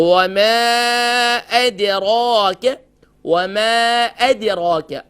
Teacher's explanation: دونوں ہونٹوں کے dry part سے میم ادا ہوتا ہے